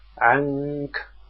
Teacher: لأنك إذا قلت عنك مثلا وأخفيت، تجد اللسان لا يرتفع ولا عمل له ولم يكن بين العين والكاف إلا غنة مجردة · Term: الإخفاء